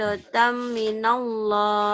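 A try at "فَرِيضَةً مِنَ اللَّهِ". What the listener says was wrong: Faridotam minallah. Salah. Berarti ada sidah di situ, ada pendobel. Di situ nggak ada pendobel di nunnya. Yang ada pendobel di sininya. Faridotam minallah. Faridotam minallah.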